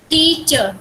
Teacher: with the first syllable louder than the second. टीचर, टीचर में टी पे ज्यादा जोर दे रहे हैं ना, सेकंड से दो सिलेबल है टीचर, ठीक है।